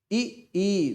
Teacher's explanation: ई देखो जीभ आगे आ रही है। ए जब जीभ आगे आ रही तो क्या है, अग्र स्वर है।